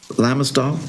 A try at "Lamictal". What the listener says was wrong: It's Lamictal, C, not S.